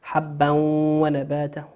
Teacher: تنوين أتى بعد حرف الواو، والواو من حروف الإدغام بغنة، يغن بمقدار حركتين